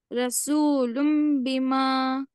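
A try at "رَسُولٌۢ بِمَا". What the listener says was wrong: थोड़ा गुन्ना अच्छा करिए ना।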